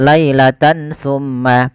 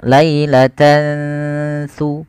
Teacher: tidak jelaskan suara n-nya. Tidak jelaskan suara nun, tidak dibaca lailatan summa. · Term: ikhfa